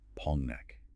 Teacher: That heavy eng sound blending into the n creates a literal thud. Pongnak. It does not sound like a gentle glide downward. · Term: Korean nasalization